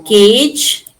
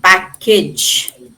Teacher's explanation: the age is unstressed. It becomes weaker. It sounds more like the schwa sound